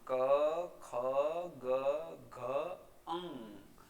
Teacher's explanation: મુખ વિવરમાંથી પસાર થતી હવા ગળામાં આંશિક રૂપે અવરોધાય છે અને પછી બહાર આવે ત્યારે આ કંઠ્ય વ્યંજનોનું ઉચ્ચારણ થાય છે · હવે આ વ્યંજનોને ઉચ્ચારણ સ્થાનના આધારે આપણે વર્ગીકૃત કર્યા છે, જેમાં કંઠ્ય વ્યંજનો, કંઠ્ય એટલે ગળામાંથી ઉચ્ચારિત થતા વ્યંજનો, એટલે કે જ્યારે એનું ઉચ્ચારણ કરવાનું છે ત્યારે હવા ગળામાં રોકાય છે, જેમાં ક, ખ, ગ, ઘ, અંગ.